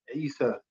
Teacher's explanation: the name Isa in Arabic starts with the letter Ain, which is this guttural sound from like the throat. It's like sound.